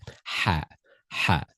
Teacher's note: learners often replace ha with the light English ha · It comes from the middle of the throat. The middle of the throat.